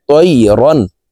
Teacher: রন এখানে গুনাহ করা যাবে না, কারণ তানউইনের পরে ইজহারের হরফ হামজা আসছে। এই কারণে এই তানউইন ওয়ালা রটি গুনাহ ছাড়া স্পষ্ট করিয়া পড়ব